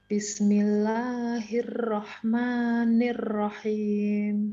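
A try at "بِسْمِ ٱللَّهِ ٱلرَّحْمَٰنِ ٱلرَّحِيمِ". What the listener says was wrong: Ya, untuk ro ya, itu tidak murni r. Jadi pantulannya tidak maksimal, hanya beberapa pantul saja. Hirrah, kayak orang pelo sebenarnya, tapi salah juga kalau pelo. Hirrah, bukan hirrah.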